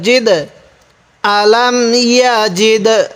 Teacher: এখানে একটু ধাক্কা দিয়ে পড়ব কারণ কলকলা হরফ হলো 5টি কফ ত বা জিম দাল। এই দালটি হলো কলকলা হরফ এজন্য ধাক্কা দিয়ে পড়ব।